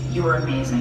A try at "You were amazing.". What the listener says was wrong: Oh, no, more emphasis on amazing. You were amazing.